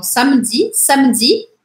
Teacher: Os franceses, quando tem um E no meio da palavra, eles meio que fazem esse E desaparecer se ele não tem acento.